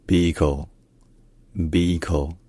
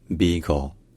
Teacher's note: Donc un peu comme en français, mais avec un i qui est long, beagle, et un l à la fin qui est syllabique. C'est-à-dire qu'au lieu d'avoir une voyelle puis une consonne, on a la consonne, en l'occurrence un l, ou plutôt un l, qui est un peu différent.